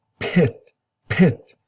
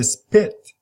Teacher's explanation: notice that when you pop up your lips when you say you have some air coming up you explode it we call it aspirated